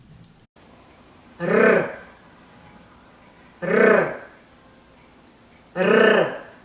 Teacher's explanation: R sounds like R in Spanish perra, and it is rolled. It is not an easy sound even for Russian native speakers. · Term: Russian R